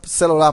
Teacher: Na palavra celular, por exemplo, o C e o LU, eles são átonos